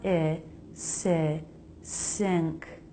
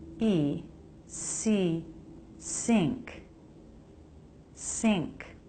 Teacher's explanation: The letter N always makes an NG sound when it's followed by a K, so it's made with the back of the tongue sing instead of the front n. When I is followed by NG, which happens all the time with ing words, the I vowel is a little tighter. It's closer to E